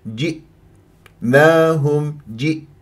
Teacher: لا تتقلقل معي الهمزه واقفل الاوتار الصوتيه جيدا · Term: الهمزه الساكنه